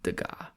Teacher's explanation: Degas, no S. You don't pronounce the S.